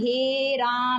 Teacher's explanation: जब किसी को दूर से पुकारते हैं तो अंतिम स्वर लंबा कर देते हैं ना खींच कर। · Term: प्लुत स्वर